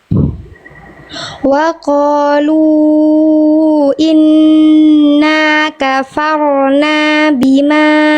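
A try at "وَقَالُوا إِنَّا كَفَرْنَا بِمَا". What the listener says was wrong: Jangan satu mulut. Jangan kafarna yang main cuma lidah, ya. Wa qalu inna kafarna.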